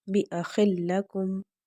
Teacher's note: ہم نے جزم اور حرکت دونوں ادا کرنے ہیں، غنہ نہیں کرنا